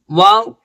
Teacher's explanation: دونوں ہونٹوں کو گول کر کر یہ واو ادا ہوتا ہے